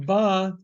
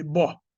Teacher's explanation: the Ashkenazic pronunciation does distinguish between the long a and the short a, with an o. then instead of ba, there will be bo.